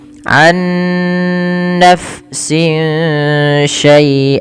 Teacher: suara nunnya disamarkan kepada huruf setelahnya sehingga ya dia membaca antara izhar dengan idgam yaitu tidak dimasukkan dan tidak diperjelas tapi di antara kedua-duanya. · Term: ikhfa hakiki